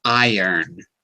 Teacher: As iron. Not iron. The R is silent.